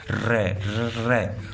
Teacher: र का उच्चारण करोगे तो जीभ के आगे कंपन करेगी। ऊपर से नीचे अव्यय को छुएगी। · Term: लुठित वर्ण